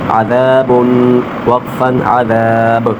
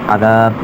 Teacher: آخر میں جھٹکا دیں گے کیونکہ با پر جزم آ جائے گی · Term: حروف قلقلہ